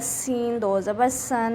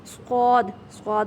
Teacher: سین کو سیٹی کے آواز سے پڑھنا ہے اور صاد کو موٹا کر کے پڑھنا ہے